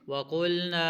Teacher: قاف کو موٹا پڑھیں گے اور الف مدہ ہے نون کے بعد اسی اس کو لمبا کر کے پڑھیں گے